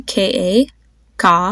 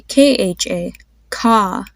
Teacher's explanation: the difference between having a Ka and a kha is that when you say kha you release a breath of air when you pronounce it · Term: aspirate